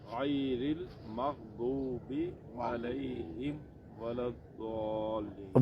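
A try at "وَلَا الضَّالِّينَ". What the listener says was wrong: واو نہیں، ولا الضا. منہ کو گول کریں گے تو واو نکلے گا. ہم جب کہیں گے دعا، اس میں منہ گول کرنے سے واو کی آواز شامل ہے. واو شامل نہیں کر رہے ہم. ولا الضا، ضاد کو موٹا کر رہے ہیں، واو نہیں شامل کرنا اس میں.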